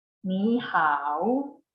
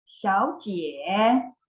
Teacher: when 2 third tones are together, the first one turns into the second tone, but it's still written as a third tone.